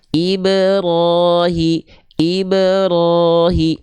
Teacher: jadi dia dipantulkan ke bunyi vokalnya e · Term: qalqalah